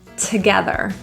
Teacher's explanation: The to in together often is reduced to a schwa